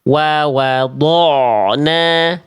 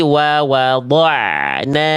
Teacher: Dari tebal ketika ain langsung tipis.